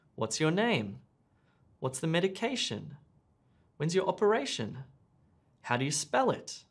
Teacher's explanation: We ask WH questions with a rising and then falling intonation